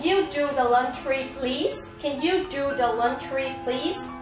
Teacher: Nhớ xin z, ngữ điệu đưa lên trên